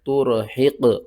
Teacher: قاف کے اوپر قلقلہ کریں گے